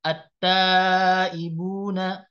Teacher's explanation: lamnya untuk idgham syamsi ini nggak dibaca